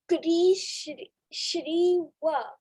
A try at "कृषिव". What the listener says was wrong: Not Shri. What is this letter? श. श को ई की मात्रा. She. कृषिव. कृषिव. So we are given this word with a re matra, कृषिव.